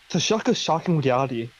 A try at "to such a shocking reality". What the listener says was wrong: Do you say such or shock? It might have been the accent, but it sounded like you said to shock a shocking reality.